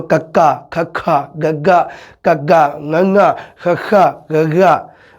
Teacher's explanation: ਇਹ ਆਵਾਜ਼ਾਂ ਜਿਹੜੀਆਂ ਉਹ ਕੰਠ ਦੇ ਵਿੱਚੋਂ ਨਿਕਲ ਰਹੀਆਂ ਨੇ, ਮਤਲਬ ਕੰਠ ਦੇ ਉੱਪਰ ਜ਼ਿਆਦਾ ਪ੍ਰਭਾਵ ਪਾ ਰਿਹਾ ਹੈ। ਇਹਨਾਂ ਆਵਾਜ਼ਾਂ ਨੂੰ ਬੋਲਣ ਲੱਗਿਆ ਅਸੀਂ ਸਾਡੇ ਕੰਠ ਦੀ ਜ਼ਿਆਦਾ ਇਸਤੇਮਾਲ ਕਰਦੇ ਹਾਂ, ਕੰਠ ਦਾ। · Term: ਕੰਠੀ ਧੁਨੀਆਂ